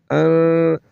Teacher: اس نون پر غنہ کریں گے اواز کو ناک میں لے جا کر ایک الف کے برابر کھینچ کر پڑھیں گے